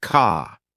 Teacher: British accent tends to soften the R, so car sounds more like ka.